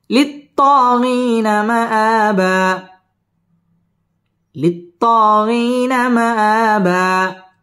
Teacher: দুই জবরের বামে ওয়াকফ হইলে একালিফ টেনে পড়তে হয়